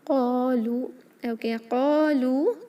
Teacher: قاف اور لام دونوں کو 2 حرکہ لمبا اسٹریچ کریں گے، حروف مد ہے.